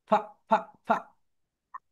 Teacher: তোমরা যখন এফ উচ্চারণ করবে, তোমাদের উপরের দাঁত নিচের ঠোঁটের সঙ্গে টাচ করবে হালকা।